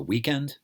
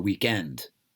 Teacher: In America, we call it the weekend. The stress is on the first syllable. And in England, they call it the weekend.